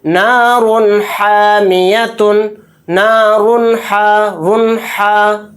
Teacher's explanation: تو یہاں پر اظہار کا قاعدہ ہو رہا ہے، تو را دو پیش رن کہتے ہوئے جو لاسٹ میں نون کی آواز آ رہی ہے اس کو ظاہر کرنا ہے، اس میں غنہ نہیں کرنا، اس طرح سے جلد پڑھنا ہے، نارن حامیتن، نارن حا، رن حا، اس طرح سے آواز اس کی نکلے گی۔